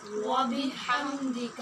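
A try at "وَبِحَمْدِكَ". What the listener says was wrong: وا پر ہے، وا منہ کھول کے نہیں، وبحم، یہ ہا باریک اور میم پہ اب قلقلہ، ہم نہیں کہنا، اور ہا ہم یہ بھی نہیں کہنا۔ وبحمدک،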